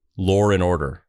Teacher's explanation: in the UK or Australia they say lore and order they add an R between W and a and it just it makes it smoother to say it it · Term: intrusive R